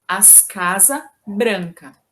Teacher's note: Falamos que, em contextos formais, é necessário marcar o S em várias palavras da frase que vão concordar com o sujeito ou com o substantivo que está no plural, mas que, em contextos informais, é possível e bastante comum que seja pronunciado o S apenas no artigo, deixando as demais palavras no singular